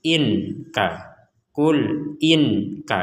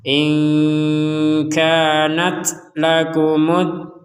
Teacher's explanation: dibacanya antara dengung dan jelas itulah yang disebut dengan samar